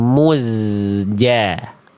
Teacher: jangan sampai zai ini kadar tipisnya tidak terjaga karena terkontaminasi oleh pelafalan domah di huruf sebelumnya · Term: zai sukun